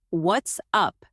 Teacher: If you raise your pitch at the end, it becomes a friendly question. What's up? Try it again. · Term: natural rise